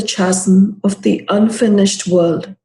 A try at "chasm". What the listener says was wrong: Very good. Chasm, the H is not pronounced.